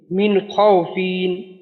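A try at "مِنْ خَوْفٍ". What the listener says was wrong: ফিন একটু টানের মতো হইল, কিন্তু টান দেওয়া যাবে না।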